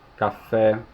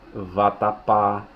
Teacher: em se tratando de acentuação o acento vai estar na última sílaba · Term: oxítonas